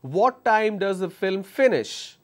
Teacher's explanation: When I say finish, it's going up and again coming down.